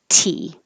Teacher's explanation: the tongue up on the top of the mouth behind the top teeth with a lot of pressure so that when you release it you have a burst of air